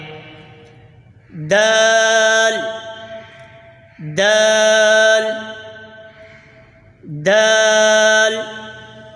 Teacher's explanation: जबान की नोक और ऊपर के दांतों की जड़ से अदा होता है दाल · زبان کی نوک اور اوپر کے دانتوں کی جڑ سے ادا ہوتا ہے